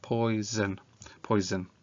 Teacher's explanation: Okay, and then can we hear that the S doesn't make a S in the middle? This time in this word it makes a Z. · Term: Z sound